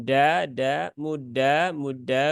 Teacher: ujungnya itu bukan digusi Tetapi dia lebih naik ke atas ya mendekati tempat keluarnya huruf ro yaitu ke langit-langit depan